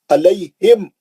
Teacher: थोड़ा भी आगे नहीं बढ़ेंगे, पकड़ लेंगे होठों को, अलैहिम थोड़ा भी गुन्ना नहीं करेंगे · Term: मीम साकिन का इज़हार, मीम साकिन का इज़हार शफ़ी